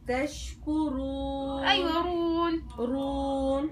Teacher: رققي الراء شويه انت بالمره جايبه تشكرون بتجيب الراء مفخمه مطبقه اكثر من الطاء